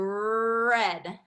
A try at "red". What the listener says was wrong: So do less lips and more tongue.